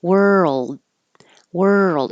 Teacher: world you don't have to make the DU noise world world it's moving from the r to the L that makes the Earl noise